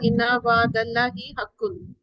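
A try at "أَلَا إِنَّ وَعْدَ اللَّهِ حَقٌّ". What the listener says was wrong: آلہ، اس کو اللہ نہیں کہیں گے، آلہ، کیونکہ تھوڑا سا آلہ انا.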